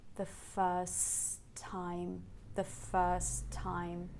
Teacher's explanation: the first T in first just falls out there's no tea so you just have one tea in time · On the border, first time are linked, and the first T in first just falls out. There's no T.